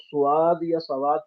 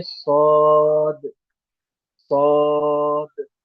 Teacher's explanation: صاد جہاں سے سین نکلتی ہے وہیں سے صاد ادا ہوگی، لیکن فرق یہ ہے کہ سین کی آواز باریک، صاد کی آواز موٹی ہوتی ہے، صاد کی آواز میں بھی سیٹی کی آواز آئے گی۔